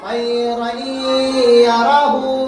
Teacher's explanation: तनवीन के बाद हुरूफे यरमलून में से या आई, इदगाम मअल गुन्ना होगा, गुन्ना के साथ मिलाकर पढ़ेंगे।